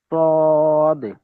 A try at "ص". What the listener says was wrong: দেখেন আমার ঠোঁট কিন্তু গোল হবে না।